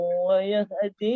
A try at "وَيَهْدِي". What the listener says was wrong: Wayahdi panjang. Wayahdi.